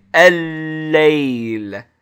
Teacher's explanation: you hear another lam, and the lam is held, so it's emphasized